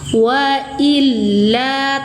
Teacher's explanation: tekan dan naikkan suara ya, lamnya bertasydid. Wa illa, satu ayunan panjang, mad tabi'i dhahiri.